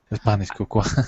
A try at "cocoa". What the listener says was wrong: So in English, we actually don't pronounce the A. So it's cocoa. Cocoa. Yeah, we pronounce it.